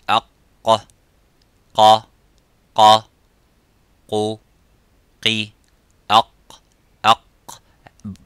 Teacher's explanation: And the letter qaf, it has an echoing sound. It is harf mufakham, it is a little bit strong. So when we pronounce the qaf, we try to pronounce it audibly and as it is, qa, by opening slightly the lips vertically and making that sound and echoing by saying qa.